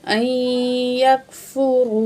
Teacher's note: हमज़ा ज़बरिया आई, या ज़बर काफ यक, फ़ा पेशफू, रा पेशवा रू, आई यकफुरू। तो रा को मोटा पढ़ेंगे क्योंकि रा के ऊपर पेश है। तो यहाँ रा के ऊपर पेश है और यहाँ जो है रा के ऊपर ज़बर है, ठीक है। · हमज़ा ज़बरिया आई, नून को नहीं पढ़ा जाएगा। जब तशदीद और साकिन दो एक साथ आ जाएं तो साकिन को नहीं पढ़ा जाता, तशदीद को पढ़ा जाएगा।